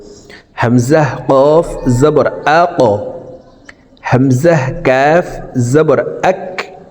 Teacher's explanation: কলকলার হরফ প্রথম দুইটির ভিতরে একটি হরফ কফ আছে তাই আমরা এই কফ হরফকে উপরের দিকে ধাবিত করে কলকলা করে উচ্চারণ করব